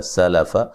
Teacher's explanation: سین کو باریک سیٹی سے ادا کریں گے